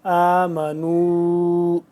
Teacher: آمنوا، نون واو مد پیش نو، مد کو ایسے پڑھتے ہیں، اور مد کو لمبا اس کو کتنا کرنا ہے جتنا اس کو کیا ہے، یعنی کہ 2 سے 3 الف کے برابر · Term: واو مدہ